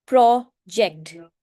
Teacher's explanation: For example, प्रोजेक्ट. प्रोजेक्ट में आप प्रो को स्ट्रेस देकर बोलेंगे